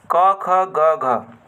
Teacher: क ख ग घ क वर्ग कर उच्चारण स्थान कंठ है